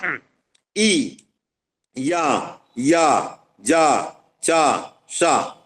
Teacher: यह सारे तालव्य वर्ण है तालू स्थान से निकलते हैं